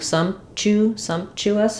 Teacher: Again, 3 consonants in a row, sometimes the middle one drops. The TU, sumptuous, is a ch sound and an oo sound. And then again, between the oo and us, we have a little bit of a vowel-to-vowel linking with the y sound.